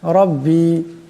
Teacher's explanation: রার উপর জবর আছে, আওয়াজটা মোটা করিয়া পড়তে হবে।